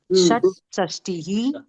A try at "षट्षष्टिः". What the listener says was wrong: சா வராதுமா, ஷ. அதுதான் நான் இப்ப சொன்னேன். நீங்க சா வரக்கூடாது.